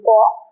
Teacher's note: যখন বলছি ক, তার মধ্যে একটা অ আছে, ক যোগ অ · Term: ব্যঞ্জন ধ্বনি